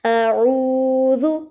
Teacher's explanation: جب واو ساکن سے پہلے پیش آ جاتی ہے تو وہ واو مدہ بن جاتا ہے، اس کو ایک الف کے برابر کھینچ کے پڑھتے ہیں